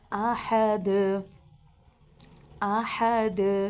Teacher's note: آحد، حروف قلقلہ ہے دال، حروف قلقلہ میں سے، ٹھیک ہے۔ تو جب ہم اس پہ وقف کریں گے تو دال پہ قلقلہ کریں گے، یعنی تھوڑا سا حرکت دے کے ہم پڑھیں گے دال کو۔